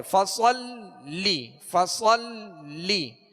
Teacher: لام پر کیا ہے؟ تشدید ہے، لہذا لام کو دوہرا پڑھیں گے، دو مرتبہ پڑھیں گے